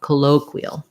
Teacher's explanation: Qui, this letter I says the E sound, and the AL is a schwa with an L, or a dark L